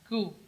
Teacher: Ku, tidak boleh dibaca tebal, tipis. Ya, huruf kaf itu setelah pangkal lidah, di depannya sedikit bersentuhan dia dengan langit-langit yang lunak dan langit-langit yang keras bersamaan